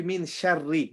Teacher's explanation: ra is empty mouth because the ra has a kasra.